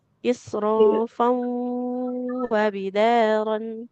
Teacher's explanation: karena fa-nya berharokat tanwin, nggak dibaca isrofa ya, nggak panjang. Tanwin bertemu waw jadinya idgham bi gunnah malapur ditahan di huruf wawunya.